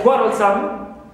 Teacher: qua is stressed first syllable, but some is neutral also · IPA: /ˈkwɒrəlsəm/